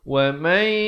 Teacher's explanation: idgham bi gunnah, masuk beserta dengung dua harakat. Yak ada bunyi hamasnya.